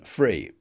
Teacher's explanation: It's common among a certain sort of native speaker to pronounce /θ/ as [f]